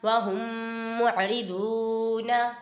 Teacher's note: ادھر میم ساکن کے بعد دوسری میم آ رہی ہے، ادغام شفیع ہو رہا ہے، ادھر گنہ کریں گے۔